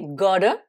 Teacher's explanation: le double T, on le prononce comme un D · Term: l'accent américain